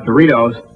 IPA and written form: dəˈriːtoʊz (Doritos)